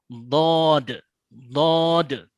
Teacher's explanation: Ditekan oleh tepi lidah yang di belakangnya lidahnya terangkat karena harus ditebalkan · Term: huruf Dod